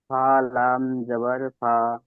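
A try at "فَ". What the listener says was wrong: ফা, লামটাকে যুক্ত করছেন কেন? লামের উপরে তো জাবার রয়েছে, লামটাকে কেন যুক্ত করছেন?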